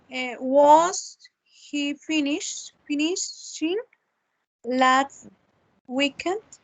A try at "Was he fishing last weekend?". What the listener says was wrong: No, no es not finishing porque el verbo no es finish, es fish, que es pescado Was he fishing last weekend? Was he fishing last weekend? This is the correct structure in the interrogative.